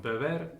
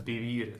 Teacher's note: This small line on the top just represents stress, so it's pronounced beber, and the stress is on the second syllable